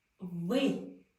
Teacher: мои верхние зубы касались нижней губы и губы в улыбке